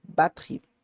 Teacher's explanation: tem um E no meio que não se pronuncia, tá? Eu não vou pronunciar batterie, vou pronunciar batterie, tá?